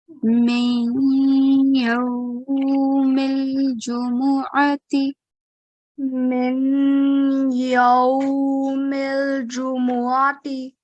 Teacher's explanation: we have to do 2 second nasal sound · Idgham is when we have Noon Sakin followed by a mushaddad letter. And we have to merge the sound of Noon Sakin into the following mushaddad letter. So that's the rule we are applying here.